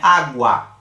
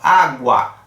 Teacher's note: O U parece que sai só um sonzinho um pouquinho mais abafado e depois a gente tem um A ali mais intenso. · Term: ditongo crescente